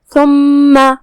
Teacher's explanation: کلمت ثم میں یہاں حرف الثا ہے، ثا کی ادائیگی زبان کے سر اور اوپر والے دانتوں کے اندرونی کناروں سے ہے تو اس کا دھیان رہے.